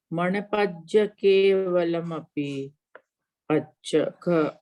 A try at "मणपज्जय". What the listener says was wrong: मणपज्जय, तो या बोलना है वो आपका दोनों छूट गया। मणपज्ज बोला आपने, मणपज्जय